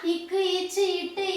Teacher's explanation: சொல்லினுடைய இறுதியில உகரம் வந்தது அப்படின்னா, அந்த இடத்துல தன்னுடைய ஒரு மாத்திரை அளவிலிருந்து அரை மாத்திரை அளவாக குறைந்து ஒலிக்கும். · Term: குற்றியல் உகரம்